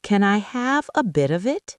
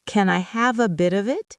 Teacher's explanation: The T in bit jumps to the O in of. The F in of, which sounds like a V, jumps to the I in it. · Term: linking